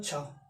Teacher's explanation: छा क्या हो जाएगा, अघोष का महाप्राण हो जाएगा, जो तेज साउंड निकलेगा